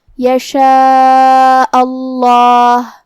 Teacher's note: کلمت اللہ کو ہم موٹی آواز میں پڑھیں گے